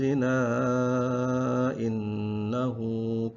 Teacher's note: jika diwasalkan karena bertemu dengan hamzah ya, maka dibaca dengan mad jaiz munfasil, jadi panjangnya 5 harokat